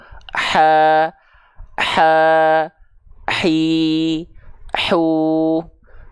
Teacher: H kecil dari tengah tenggorokan, karakteristik nafasnya berbisik, dialirkan nafas berbisiknya dulu, ha, ha, hi, hu, nah gitu ya, dialirkan nafas berbisiknya dulu.